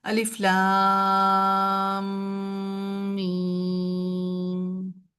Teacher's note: جب دو میم اکٹھے ہو جاتے ہیں اور پھر وہ ان کو ہم ادغام کر دیتے ہیں تو اس کے اوپر تشدید آ جاتی ہے، تو ان کو پھر ہم غنہ کر کے پڑھا جاتا ہے